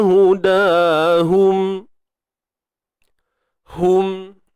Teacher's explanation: Apa pun bunyinya ha di pangkal kerongkong kita.